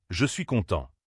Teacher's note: L'intonation, c'est la mélodie de ta voix. Pour une phrase affirmative, la voix descend à la fin. · La voix baisse sur content.